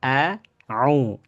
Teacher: Bacaan panjang au ya. Maka ini bacaannya melalui aljauf atau rongga mulut